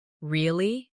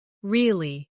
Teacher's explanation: Say, really? With a rising tone to show surprise. Now say, really? With a falling tone to show you don't believe someone.